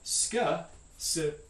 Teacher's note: There it stands for two different sounds. It's a voiceless alveolar fricative followed by a voiceless velar stop